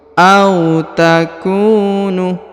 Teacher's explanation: Kemudian huruf ku dibaca dipanjangkan 2 harokat ya, karena di depannya terdapat waw sukun.